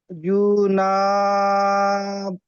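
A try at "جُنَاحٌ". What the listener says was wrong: জুটা টান কেন দিচ্ছেন জুটা হারাকার তো হয় দেখে পড়েন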